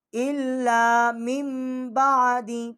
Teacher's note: ہم یہ حمزہ جو ہے اس کو ہم لام کے ساتھ تشدید کر کے پڑھیں گے ، اور اس کے آگے جو الف ہے یہ حمزہ ہے،